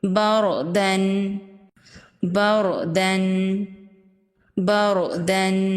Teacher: جب را ساکن سے پہلے زبر ہو تو را ساکن کو پر پڑھیں گے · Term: را کو پر پڑھنے